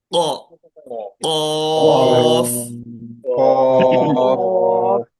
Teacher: ये जो है कैसा अदा होता है, या देखिए आप ये लेफ्ट साइड की इमेज में देखिए, जैसा हमारी जबान पीछे की तरफ जाती, पीछे हमारी जबान का हिस्सा मोटा होता है, तो वो पिछले जबान का पिछला हिस्सा यानी जो मोटा हिस्सा होगा वो ऊपर तारफ को लगेगा. · इसमें जो है ख वाली साउंड नहीं आना चाहिए, बल्कि गोल्ड साउंड خ ऑफ।